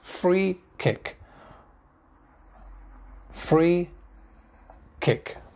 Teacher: Free kick, free kick. Two words, two definite stresses.